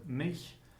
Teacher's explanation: the allophone ch occurs after front vowels. For instance, in the word mich, which means me, myself.